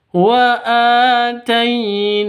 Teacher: Ada tanda vertikal di atasnya, ada huruf alif di atas huruf nun atau tanda vertikal di atas huruf nun. Bunyi 'na' berlangsung selama dua ketukan.